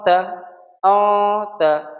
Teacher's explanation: اس آواز کو ہم ایک الف کے برابر ٹھہراؤ دیں گے اور ناک میں ہی رکھیں گے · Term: اخفا